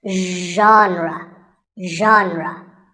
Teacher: word how would you say it the correct pronunciation is genre pay attention to the first sound it's like shh but you have to put your voice into it